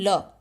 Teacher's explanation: वे वर्ण जिनके उच्चारण में जीव मसूड़ों को छूती है। और हवा का वेग जीभ के आसपास से निकल जाता है। वे पार्श्विक व्यंजन कहलाते हैं।